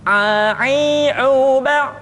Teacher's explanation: huruf a dikeluarkan dari tengah-tengah tenggorokan seperti kita mengucapkan huruf h